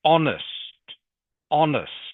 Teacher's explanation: So the H is silent. All right, so it actually begins with a vowel sound.